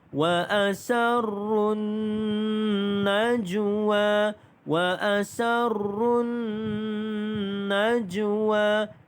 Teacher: Qalqalah sughra. So kita baca dengan detakan kecil.